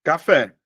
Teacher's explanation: as oxítonas meus amores tem como sílaba tônica a última